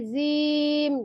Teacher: ujung lidahnya itu adanya diantara ujung gigi seri atas dan bawah memang tidak menyentuh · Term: huruf Za